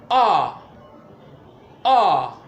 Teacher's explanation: it lies in the middle and it is pronounced ah ah the sound is produced in the center of the oral cavity which is why it is known as a central vowel sound